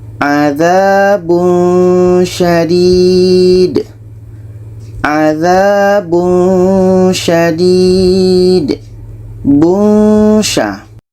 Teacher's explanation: Ketika sebut tanwin, kita sudah merasakan syah. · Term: ikhfa hakiki